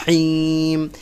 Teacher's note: আরবি হা হবে কণ্ঠনালীর মধ্যখান থেকে